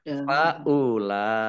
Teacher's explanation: karena bertemu dengan huruf hamzah dalam satu kata maka menjadi mat wajib muttasil. Dibaca panjang harus lima 5 harokat.